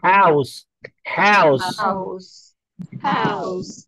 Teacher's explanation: Actually, H is a glottal. Glottal means gale se nikalti ye awaaz.